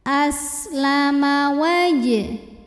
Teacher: sin punya sifat sofir, salah satu sifatnya sofir ya, yaitu ada desisan seperti suara ular